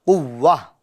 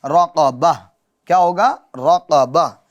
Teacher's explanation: اب آپ گولتا پر جب وقف کریں گے تو اس گولتا کو کس سے بدل دیں گے؟ یہ ہا ساکنہ سے بدل دیں گے۔